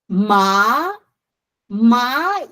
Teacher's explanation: the second tone is going 45 degree from low to high